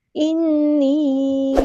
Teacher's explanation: نون پہ غنہ زمانی ہو رہا ہے، ایک الف کے برابر ہم یہاں پہ رکیں گے، یا مد آ گئی ہے تو ایک الف کے برابر لمبا کریں گے۔